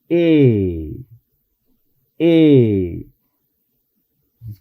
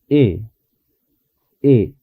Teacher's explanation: el sonido E es un sonido más largo que nuestra E. Entonces, debemos hacer esta E en inglés un poco más larga. · No tenemos este sonido en español exactamente, pero debemos de saber que hay un parecido a la E en español, al sonido de la E en español. Cuando decimos E en inglés, los labios no se retraen. Nos dice, no se retraen tanto como cuando pronunciamos la E.